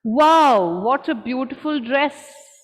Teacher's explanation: for exclamations for showing surprise your initial pitch will be high and then you come down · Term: falling pitch